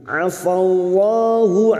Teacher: mim yang bertasdid gunnah musyaddadah kita dengungkan selama 3 harakat.